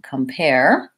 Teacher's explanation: we have a short unstressed syllable and the pair, the second syllable, is stressed. So I have that clear A vowel in this and a schwa.